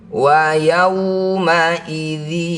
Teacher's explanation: waw sukun didahului fathah disebut huruf lin. Baca waw ini dengan lembut, berikan huruf vokal u.